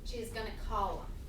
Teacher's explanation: She is gonna, and then call them might turn into something like column. Yeah, we drop the TH sound